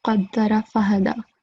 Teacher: qa is going to be thick and ha is going to be thin.